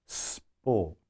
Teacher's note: there's no breath on the plosive it all comes out on the fricative